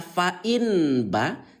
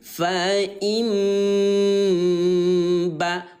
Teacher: Yang diganti adalah bunyi nun yang baris mati menjadi suara mim. · Atau kalau mau lebih sederhana lagi, bunyi N, ayah bunda ya, bunyi N kita ubah menjadi bunyi M bun. Ya, yang tadinya dibaca fa'in ba, sekarang ubah dia menjadi fa'im ba. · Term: iqlab